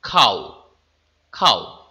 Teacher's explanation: এই খাও ধ্বনিটি যখন উচ্চারণ করছি তখন ও স্পষ্টরূপে উচ্চারিত হচ্ছে না। ও এর উচ্চারণ অর্ধেক হল। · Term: অর্ধস্বরধ্বনি, অর্ধ স্বরধ্বনি